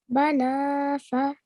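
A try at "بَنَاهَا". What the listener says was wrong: Banaha. This is a ha, so you might have mistaken it.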